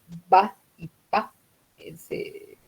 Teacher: oclusivas se llaman porque forman un cierre, ¿no? Una oclusión. El aire queda comprimido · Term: consonantes oclusivas